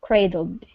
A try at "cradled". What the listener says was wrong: Okay, CR instead of kue, like a CU. Cray.